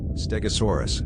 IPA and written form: ˌstɛɡəˈsɔːrəs (Stegosaurus)